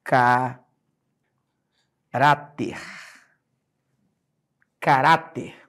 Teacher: observa por favor que a sílaba tônica é a penúltima sílaba terminou em R é acentuado tudo bem Depois eu falei